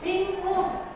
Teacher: nun mati berhadapan dengan huruf k. Jadi dibacanya jelas mendengung.